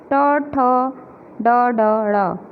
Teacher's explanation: जीभ जो है हमारी ऊपर तालु से जब टकराती है तो ये ध्वनियाँ निकलती हैं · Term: मूर्धन्य